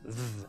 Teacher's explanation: pronounced by putting the tongue just behind your upper in sizers it's a bit like the t h sound in English although it has a bit of a buzz to it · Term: Double D sound